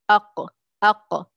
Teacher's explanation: The base of the tongue which is near यूविला, the base जो ज़ुबान का जो पीछे का जो हिस्सा है, जो आपके यूविला के करीब है, वो जाके छूता है ऊपर और बंद कर देता है, ताकि वहाँ से कोई हवा की दौरान ना हो। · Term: क़ाफ़